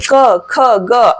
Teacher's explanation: क, ख, ग, घ, अंग, ये तो कंठ से बोले जाते हैं